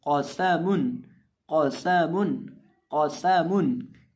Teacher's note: क़ाफ को मोटा करके पढ़ेंगे और सीन को पढ़ते वक्त इसके अंदर हम सीटी की आवाज़ पैदा करके पढ़ेंगे